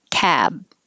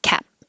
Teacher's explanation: the only thing that's really changing is the vowel gets longer before a voiced sound